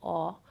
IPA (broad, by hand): ɔ